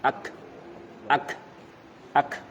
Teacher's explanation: Kalau disukunkan kaf itu baru keluar udaranya, nafasnya.